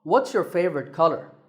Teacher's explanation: what's your favorite color has a falling tone